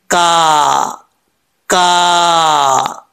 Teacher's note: जुबान की जड़ ऊपर वाले तालू के सख्त हिस्से से लगे तो यह काफ पढ़ा जाता है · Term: बारीक काफ